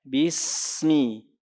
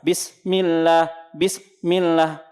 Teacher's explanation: Masih ada suara sinnya mengalir terus.